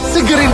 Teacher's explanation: kata segar itu merupakan suatu perubahan fonem A menjadi E